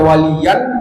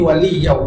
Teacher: Idgham bersama gunnah, dimasukkan tanwinnya ke wawnya, kemudian dilamakan, digunakan. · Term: idgham digunnah